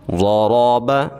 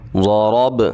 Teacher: مکمل پڑھیں گے، ضرب، ضاد کو بھی موٹا پڑھیں گے اور را کو بھی موٹا پڑھیں گے۔